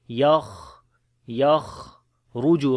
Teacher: So ya we connect with the kha, as kha we read in heavy sound, and also we make hams quality